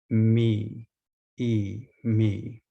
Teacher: The jaw is nearly closed. It's the higher of the high pair of sounds. The tongue is in the front, E, E, and the corners of the mouth pull back.